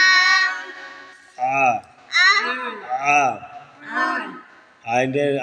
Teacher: আইনের মাখরাজ হলকের মধ্যখানে হইতে